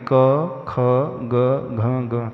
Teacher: और दांतों का प्रयोग होगा इसमें होठों का प्रयोग नहीं होता जब हम क वर्ग का उच्चारण करेंगे क ख ग घ ग तो हमारे कंठ का प्रयोग होता